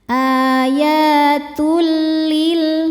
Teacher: Selanjutnya ada idgham bila gunnah karena ada tanwin dhammah menghadapi huruf lam. Cara bacanya tanwinnya dimasukkan ke lam, tidak didengungkan, cukup ditekan. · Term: idgham bila ghunah